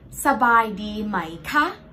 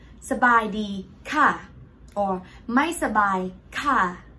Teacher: the word ka high tone without tone mark is used for question